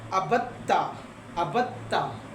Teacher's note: دال ہے نا، دال، دوسرا تا ہے، دونوں ہم مخرج ہیں، اس کو کیا کیا؟ دال کو تا میں ضم کر دیا